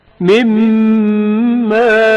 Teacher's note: میم میں نون ساکن کا ادغام جو غنہ کے ہمراہ ہے